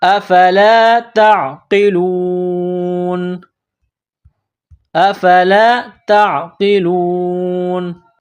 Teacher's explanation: جب یہاں پر سٹاپ کریں گے، وقف کریں گے تو نون کو سائلنٹ کریں گے